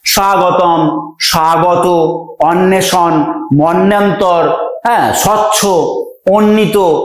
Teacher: শব্দগুলির ভিতরের বটিকে আমরা খুব স্পষ্ট করে উচ্চারণ করছি না বা উচ্চারণ করার সুযোগ নেই, আবছা রয়েছে, এটিকে আমরা বলছি অন্তস্থ ব।